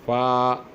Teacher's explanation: نچلے والا ہونٹ اوپر والے دانتوں کو لگ جائے تو فا کی ادائیگی ہوتی ہے